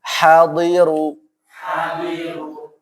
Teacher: pakai ha bersih ya. Ha tenggorokan bagian mana? Tengah ya.